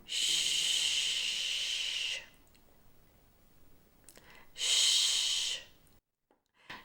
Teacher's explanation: Now the third way the letter C is pronounced is when C sounds like sh. Again, it's unvoiced, so no voice required, but lots of breath. And just like the S sound, the airflow is only restricted, so you must allow some air to pass through, but the tongue is slightly further back from the alveolar ridge. · the airflow is only restricted, so you must allow some air to pass through, but the tongue is slightly further back from the alveolar ridge. Both sides of the tongue touching the sides of the ridge. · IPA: /ʃ/